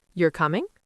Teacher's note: Voice goes up at the end.